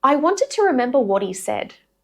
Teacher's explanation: Vowel after h gets connected to the consonant sound of the word before it.